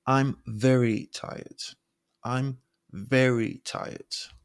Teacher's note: your voice getting lower as you speak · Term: downward pitch